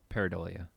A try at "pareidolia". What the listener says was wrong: Not pareidolia. We'll get that long I out of there.